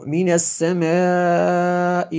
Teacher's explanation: میں نے اس لفظ کو لمبا کیا اس لیے کہ یہاں پہ یہ مد متصل ہے، یہ دیکھیں حمزہ اسی کلمے میں ہے اور موٹی بھی ہے۔